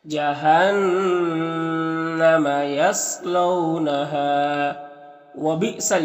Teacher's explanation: نون مشدد ہے تو نون مغنہ ہوگا، اور نون کی آواز کو ناک میں لے جا کر گنگنائیں گے، 1 الف کی مقدار۔ صاد حروف مستعلیہ میں سے پر پڑھیں گے، یہاں پر واولین ہے، اور یہاں پر الف مدہ ایک الف کے برابر کھینچیں گے تو اس طرح سے پڑھیں گے جہنم یصلونہا وبئسل، یہاں پر حمزہ ساکنہ ہے تو جھٹکا لگے گا پڑھنے میں.